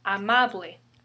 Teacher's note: The stress falls second to the last syllable.